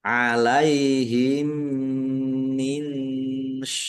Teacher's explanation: Mim sukun bertemu dengan huruf mim. Idgham mutamasilain atau idgham mimi dibaca mendengung. Mim ditandai mimnya ada tasdidnya ya.